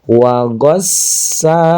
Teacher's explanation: ada tasydid di atas sa ini sa biasa pakai s aja maka harus ditekan wagossaqo. Nah, panjang dua harakat, panjang juga dua harakat.